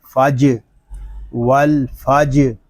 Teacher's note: جیم ساکن ہے، اس میں کلکلہ خوب ظاہر کریں گے۔